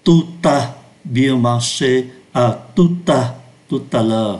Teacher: khi từ tout đứng trước một từ bắt đầu bằng nguyên âm hoặc chữ H câm, chúng ta phải nối âm